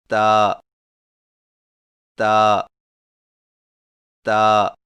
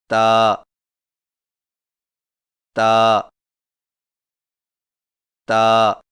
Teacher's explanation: تا کی ادائیگی میں زبان کی نوک کو سامنے والے اوپر کے دو دانتوں کی جڑ سے لگا کر باریک آواز میں پڑھیں، یعنی تا تا تا.